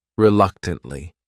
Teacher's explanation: should file their taxes annually the next word is reluctantly this word has four syllables and the stress is on that second syllable